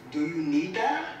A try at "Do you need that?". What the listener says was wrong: No. You have to say it in a nice tone. Like, say it like nice, okay. But like, people know that you mean business. Do you need that?